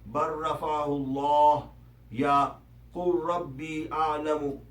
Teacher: لام سے پچھلے حرف کا براہ راست را سے ادغام ہو جاتا ہے، اور اس میں لام کی آواز نہیں پڑی جاتی، مثلا بر رفعہ اللہ یا قل ربی اعلم۔